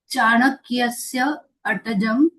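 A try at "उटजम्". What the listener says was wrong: Atajam va? Akarah asti va tat. Utajam.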